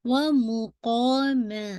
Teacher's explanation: قا پورا full of mouth کے ساتھ، الف یعنی 2 کاؤنٹ